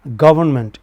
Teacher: Government, initial syllable is stressed.